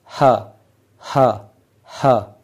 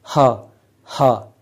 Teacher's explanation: ना आपकी जुबान हिल रही है ना आपके दांत ना कोई भी चीज ना आपके लिप्स कुछ भी इनवॉल्व नहीं है सिर्फ गले में से ग्लॉटिस में से आवाज निकल रही है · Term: ग्लोटल साउंड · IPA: [h]